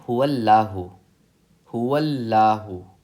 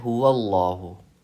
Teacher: इसको हमने पढ़ना है हुवल्लाहु, लाम को पुर पढ़ना है